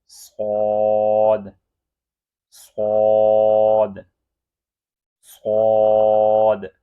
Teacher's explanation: ز اور سین یہ دونوں باریک ہیں، لیکن یہ صاد اس کو موٹا پڑھنا ہے